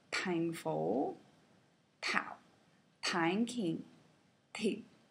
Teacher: in Vietnamese, the t is heavily aspirated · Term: aspirated T